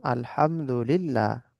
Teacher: যদি আল্লাহ শব্দের লামের পূর্বে জের হয় তাহলে বারিক, মানে বারিক মানে পাতলা বা লা করে পড়তে হবে, যেমন আলহামদুলিল্লাহ।